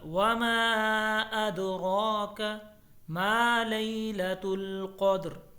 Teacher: وما کے اوپر مد ہے، اس کو لمبا کر کے پڑھنا ہے 1 سے 3 الف کے برابر